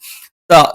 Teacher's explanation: നാവിന്റെ അറ്റം മേലെ മുൻപല്ലിന്റെ മുരട്ടിലാണ് പക്ഷേ നാവിന്റെ അറ്റത്തിന്റെ താഴ്ഭാഗം ചെറുതായി മേലെ മുൻപല്ലിന്റെ പള്ളയിലേക്ക് ഒന്ന് സ്പർശിക്കും